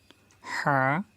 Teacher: হা, চেপে বলবো আমরা, কণ্ঠনালীর মাঝখান থেকে উচ্চারিত হয়।